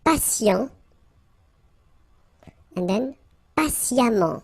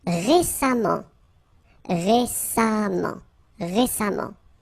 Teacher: even if you write it E-M-M-E-N-T, phonetically it goes like amant